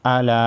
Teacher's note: الا چھوٹی مد ہے، 3 الف کے مقدار کھینچیں گے